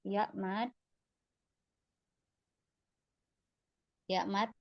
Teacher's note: tengah lidah naik bibirnya juga sama kayak Alif enggak monyong terbuka